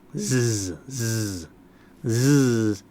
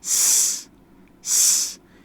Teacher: All that is a voiced form of s, s. Your teeth and tongue are in the same place. One uses the voice, one doesn't.